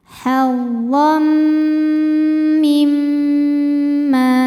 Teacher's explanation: Lalu berikutnya ada hukum idgham bi gunnah kamil ya, karena ada tanwin fathah menghadapi huruf mim. Maka bunyi tanwin ini bukan lagi n, melainkan langsung masuk ke mim. Hazzam disertai bunyi dengung.